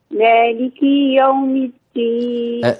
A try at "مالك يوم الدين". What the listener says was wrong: كسرت مالكي، اصبري مالكي، لا تطوليها، لا تقولي مالكي يوم الدين، قولي مالكي يومي على طول. مالك يا على طول. ليك يا ليك يا مالك يوم الدين.